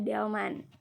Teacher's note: bunyi hambat apikodental atau lamino alveolar bersuara